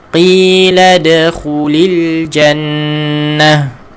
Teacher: bila kita wakaf pada ta bulat ataupun ta marbutah, dimatikan dengan huruf ha.